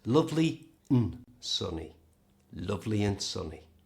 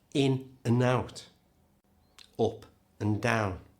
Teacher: Notice the word and here is reduced right down. We don't pronounce the D, and the A becomes a schwa sound, the little sound.